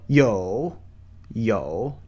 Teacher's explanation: notice how it descends then ascends outward upwards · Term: third tone